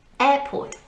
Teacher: Air is the strong syllable of the 2.